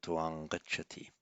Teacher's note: the final M of tvam would become anuswara, and it would be pronounced as a ng, taking on the point of articulation of the following word, so tvam gacchati.